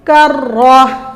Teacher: یہ جو کاف ہے ڈنڈے والا یہ موٹا نہ ہو